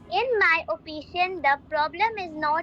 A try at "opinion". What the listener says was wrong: Opinion, in my opinion. This word is opinion, not opicious. In my opinion, the problem is not social media itself, but the way we use it.